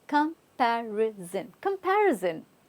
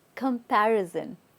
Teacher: Now, S-O-N is not sun here. It's zin, zin. Okay, we're using it as a z.